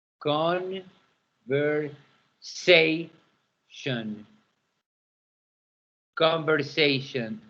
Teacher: Sation is the tonic syllable.